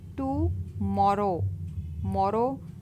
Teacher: तो is used over the vowel टू show the accent in the word टुमारो। The accent is on the second syllable